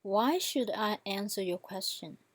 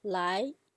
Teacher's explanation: the second tone happens when your voice goes from middle to highest